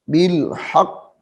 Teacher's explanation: قاف موٹا ہے، اس کو موٹا کر کے پڑھیں گے